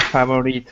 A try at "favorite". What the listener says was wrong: Favorite. Close. So when we pronounce favorite, we don't pronounce the O. So it sounds like favorite.